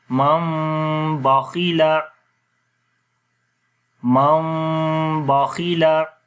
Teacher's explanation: تو میم کو میم کے ساتھ ملائیں گے، اور یہاں پر میم کی آواز کو ناک کے اندر چھپائیں گے، اور میم کی جو آواز ہے وہ ہونٹ آپس میں ملائیں گے، لیکن نرمی کے ساتھ، سختی کے ساتھ نہیں ملانا، تو آواز ناک کے اندر جائے گی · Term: اقلاب